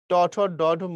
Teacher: ট ঠ ড ঢ মূর্ধন্য, এগুলোর উচ্চারণ মূর্ধাতে। মূর্ধা মানে হচ্ছে উপরের তালুর যে শক্ত অংশটা আছে, উঁচু অংশটা দাঁতের পিছনে, এটাকে মূর্ধা বলে।